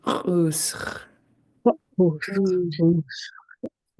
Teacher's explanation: you just let that friction kind of go, almost like you're doing a snoring sound, and drag it out.